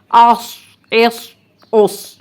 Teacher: اب دیکھیں اس کو جزم کے ساتھ آس، ایس، اوس، اس میں سیٹی کی آواز بھی آئے گی، لیکن اس کو ہم نے سین سے نہیں ملانا، اس، اس، اس۔ سین میں بھی سیٹی کی آواز ہے، لیکن اس کو موٹا پر پڑھنا ہے، منہ بھر کر ادا کرنا ہے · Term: صاد